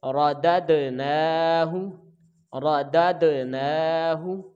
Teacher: آگے را کو ہم جلدی ادا کریں گے، دال کو دال کے ساتھ ملا کر پڑھیں گے تو دال ساکن ہے تو حروف قلقلہ ہے، جنبش کے ساتھ پڑھیں گے اور اس کی آواز لوٹ کر آئے گی۔ نون کے اوپر کھڑی زبر ہے تو 1 الف کے برابر کھینچیں گے · ہا کے اوپر پیش ہے تو آگے چونکہ واو ساکن نہیں ہے تو لہٰذا اس کو ہم جلدی ادا کریں گے